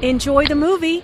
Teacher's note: notice how the intonation Rises on movie